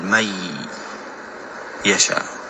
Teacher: من يشاء النون ساكنة ويشاء يا متحركة، فإذا التقى الساكن مع المتحرك أدغم الحرف الأول، يعني أزيله وأقول من يشاء. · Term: الإدغام